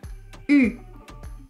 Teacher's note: Ici, ce qui est intéressant, c'est la prononciation du U qui n'existe pas en espagnol, ni dans beaucoup d'autres langues d'ailleurs. Pour prononcer le son U, la bouche prend la même forme que pour prononcer le son O, mais vous allez essayer de prononcer le son I. Ça va donner U.